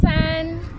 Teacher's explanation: It also has a first tone, which is flat.